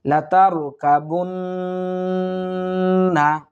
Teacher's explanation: গুন্নার পরিমাণ এক আলিফ টানিয়ে পড়ব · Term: ওয়াজিব গুন্না